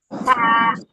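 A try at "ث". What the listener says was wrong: সা না, এই যে এটা ঝা। না, আপনারটা ছা, এই যে এটার মতো হয়, এটা ছার মতো হয়, ছা না, হবে না, ঝা হবে, ঝা, ঝা।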